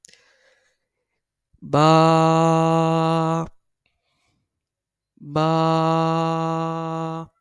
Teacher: با دونوں ہونٹوں کے تر حصے سے ادا ہوتا ہے۔ با، با۔ اس کے بعد نیکسٹ تا۔